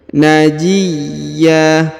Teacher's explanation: huruf ya ditahan dan ditekan lalu dipanjangkan 2 harokat